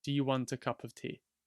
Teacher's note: So the A is almost always a schwa.